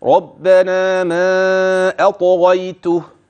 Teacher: والطاء قلقلت واخذت حقها من التفخيم